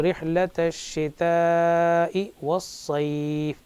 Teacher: شتائی اس کو تھوڑا زیادہ کھینچیں گے کیونکہ یہاں پر شتائی حروف مد کے بعد حمزہ اسی کلمے میں آ رہا ہے، تو اس کو کہیں گے ہم مد واجب، مد متصل، یعنی حرف مد کے بعد حمزہ اسی کلمے میں جب آتا ہے تو اس کی مقدار کشش بھی بڑھ جاتی ہے، 2 الف 4 حرکات کے برابر ہو جاتی ہے۔